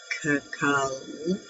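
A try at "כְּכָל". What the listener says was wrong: Okay, so the only is the second, the first part of that last word, which is hyphenated, kahal. So there's no dot in the second letter. So it doesn't have a hard ka. The first one is ka, and then hal. Kahal hamonam.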